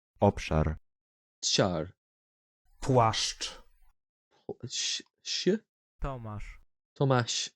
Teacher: SZ is a voiceless retroflective fricative